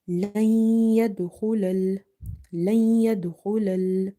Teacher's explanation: So we are merging here by doing nasalization. · Dal is from the Qalqala or the bouncing letters, but here we have weak Qalqala. Kha is from the heavy letters, so the sound of kha is heavy.